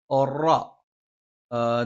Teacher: നാവിന്റെ തലയുടെ മുതുക് മേലെ മുൻപല്ലിന്റെ മോണയിലാണ്